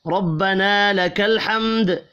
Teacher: سمع اللہ لمن حمیدہ کہتے ہوئے آپ نے کھڑے ہونا ہے، اور پھر تحمید یعنی ربنا لک الحمد، ربنا را کو زبر کی وجہ سے پر پڑھیں گے، الف مدہ ایک الف کے برابر کھینچ کر پڑھا جائے گا، حم میم ساکن کے بعد دال ہے، اظہار شفی ہوگا، غنہ نہیں ہوگا